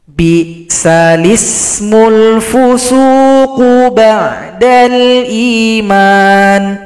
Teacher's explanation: satu-satunya alif lam di mana huruf lamnya dibaca. I menjadi li. Bi'salismul fusuqu ba'dal iman.